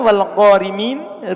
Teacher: Al-ula, keadaan yang pertama, antakuna maksuratan, ro-nya itu di kasro. Ketika ro-nya berkasro dan dia dibaca sambung, maka dia dibaca tipis.